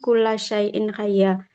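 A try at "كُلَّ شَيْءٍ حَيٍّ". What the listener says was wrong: Nah, hayyin ya. Kullu syai'in hayyin. Karena harokatnya di bawah tasdid, maka dibacanya kasrah ya.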